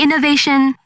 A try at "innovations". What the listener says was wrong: Hold on, innovations. We have lots of innovations, so put a bit more emphasis on the S.